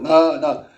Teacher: 입안의 통로를 막고 공기를 코로 내보내면서 내는 소리는 비음이다